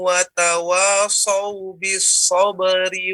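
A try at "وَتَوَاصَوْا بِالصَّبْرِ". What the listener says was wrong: Itu so. So itu yang sebutkan seolah suaranya keluar. Tapi yang betul so, suaranya menghujam ke atas.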